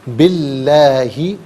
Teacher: حرف لام سے پہلے والے حرف باقی نیچے زیر ہے تو اس میں اللہ کی حرف لام کو باریک کر کے پڑھا جائے گا